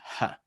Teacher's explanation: very, very back of the throat, very open, that hey sound, that H sound, huh, right?